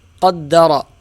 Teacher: یہاں را کے اوپر زبر ہے تو یہ را موٹی پڑھی جائے گی